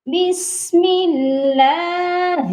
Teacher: اللہ کے نام سے پہلے میم کے نیچے زیر ہے، اسی لیے لام کو ادھر بھی باریک ہی پڑھنا ہے